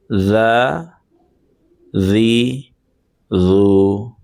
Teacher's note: ٹھیک ہے، اس کو تھوڑا سا ہمیں زبان کو نرمی کے ساتھ ادا کرنا ہے، اور زبان کو اپنی دونوں دانتوں کے بیچ میں، یعنی سامنے والے جو دانت ہیں ان کے بیچ میں آپ رکھیں گے تو وہاں پہ آپ کو یہ صحیح طریقے سے آپ کا ادا ہو جائے گا.